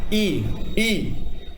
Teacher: अब देखिए आपने कोई स्वर का नाम लिया, जैसे मैंने आपका ई बोला, ई, तो आपके अग्र भाग से, मुंह के अगले वाले भाग से जब आवाज निकल रही है तो वो अग्र स्वर होंगे